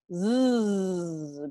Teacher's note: Z, not s, but z, usando la voz. Tu garganta debe estar vibrando. Zzz. Cuando pones tu mano aquí, debes sentir zzz.